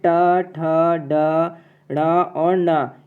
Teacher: ट, ठ, ड, ढ़ और न। ये मुख के भीतर ऊपरी छत का अगले भाग से निकलने वाले व्यंजन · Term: मूर्धा